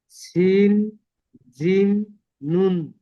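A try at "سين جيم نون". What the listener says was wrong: জি, সিন জিম নুন, মাশাল্লাহ, সঠিক বলেছেন।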